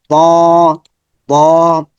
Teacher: একই আকৃতি এটার মাখাজ আমরা দেখি জিহবার আগা উপরের দাঁতের গোড়া যেবার আগা উপরের দাতের গোড়াতে লাগবে তা মত দালের মত মোটা সাউন্ড হবে মোটা সাউন্ড মোটা সাউন্ড